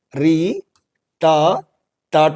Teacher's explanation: यह सब कहां से बोले जा रहे हैं मुर्धा से बोले जा रहे हैं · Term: मूर्धन्य वर्णों